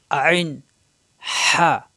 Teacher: হলকের মধ্যখান অর্থাৎ গলার মাঝখানে চাপ সৃষ্টি হবে